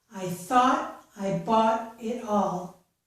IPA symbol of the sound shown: ɔ